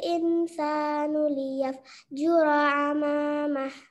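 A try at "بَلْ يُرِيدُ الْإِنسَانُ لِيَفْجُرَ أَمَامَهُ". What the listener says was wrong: Pada ayat 5, kata insanu, innya itu dengungkan lagi ya, karena di situ ikhfa, samar serta dengung. Ikhfa itu samar serta didengungkan. Contohnya, bal yuridul insanu liyafjura amamah.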